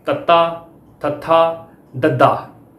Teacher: ਇਹ ਦੰਤੀ ਧੁਨੀਆਂ ਮੰਨੀਆਂ ਜਾਂਦੀਆਂ ਨੇ। ਇਹਨਾਂ ਦੇ ਉਚਾਰਨ ਵੇਲੇ ਸਾਹ ਦੀ ਹਵਾ ਨੂੰ ਜੀਭ ਦੀ ਨੋਕ ਦੁਆਰਾ ਉੱਪਰਲੇ ਦੰਦਾਂ ਦੇ ਪਿਛਲੇ ਪਾਸੇ ਤੋਂ ਰੋਕਿਆ ਜਾਂਦਾ ਹੈ। ਇਹਨਾਂ ਵਿੱਚੋਂ ਤੱਤਾ, ਥੱਥਾ, ਦੱਦਾ ਸ਼ੁੱਧ ਦੰਤੀ ਵਿਅੰਜਨ ਧੁਨੀਆਂ ਹਨ।